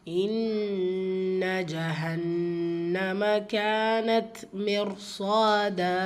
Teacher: இன்ன நூன் முஷததா குன்னா செஞ்சு ஓதணும் · க வந்து அலிஃப் மதா இரண்டு ஹரக்கத் அளவு நீட்டம் கொடுத்து ஓதணும்